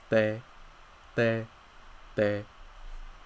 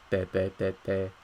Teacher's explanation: So in this sound, it's similar to ta, right? The only difference is that there's no aspiration. There's no puff of air. So when you say this, it's gonna sound a little bit like a D, te, te, te, te, but it's not a D.